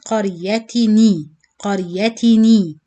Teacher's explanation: you keep one kasra for ta, and then the other kasra become noon kasra.